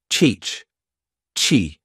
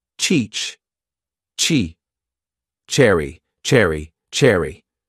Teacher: your lungs sh the CH sound combines a t and Sh I build up pressure with the T and then quickly switch to the shh CH Chi notice how the sound stops and my jaw opens